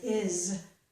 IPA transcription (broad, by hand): ɪz